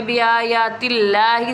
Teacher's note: اور اللہ عز و جل کا لام سے پہلے زیر ہے، اس لیے یہاں پہ اللہ عز و جل کا جو اسم مبارک ہے اسے ہم باریک پڑھیں گے، یعنی ہم اللہ نہیں کریں گے، اللہ کریں گے صرف، یعنی یہاں پہ جس طرح ہم پر کرنے کا مطلب یہاں پہ ہم نے پڑھا من اللہ، یہاں پہ پڑھیں گے بآیات اللہ، سمپل۔